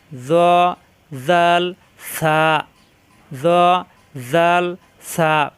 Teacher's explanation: জিহ্বার আগা উপরের দুই দাঁতের আগার সঙ্গে লাগাইয়া নরম করে উচ্চারণ জাল ছা জাল ছা প্রত্যেকবার জিহ্বার আগাটা একটু বের করে উপরে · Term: 13 নাম্বার মাখরাজ